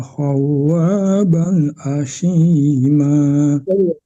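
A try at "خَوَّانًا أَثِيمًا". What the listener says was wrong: Khawanan bukan ban ya. Ya, ha kecil ya, dilatih-latih ya membaca ha kecil, jangan disamakan dengan ha besar.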